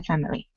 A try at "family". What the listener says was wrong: Yeah, we don't really pronounce that I. Generally, it's just family, my family.